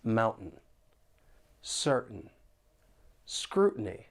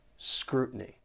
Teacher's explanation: with the American accent, when the T is followed by an N sound, people may pronounce it with a glottal T, and the sound comes from the throat